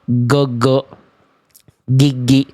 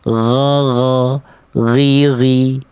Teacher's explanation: Kalau jadi huruf G dia enggak ngalir suaranya, dia akan mampet.